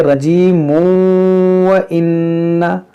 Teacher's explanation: جب ملائیں گے تو پھر یہاں پر تنوین کے بعد واو ہے تو یہاں پر ادغام ہوگا ، اس کو پڑھیں گے رجیم وَإِنَّ، ایسے پڑھیں گے وَإِنَّ